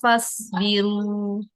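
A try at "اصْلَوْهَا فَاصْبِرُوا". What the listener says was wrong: Kalau ini bacanya bukan jadi as tapi jadi is ya. diulang kedua-dua sukunnya berubah jadi sin sukun. Shotnya pangkal lidahnya dinaikkan. Islauha fasbiru. Islauha fasbiru. Fas. Jadi di pangkal lidahnya dinaikkan. Baca, anggaplah sekarang ini fasbiru pakai sin. Coba bacanya gimana kalau pakai sin? itu jadi shin itu. Pakai shot.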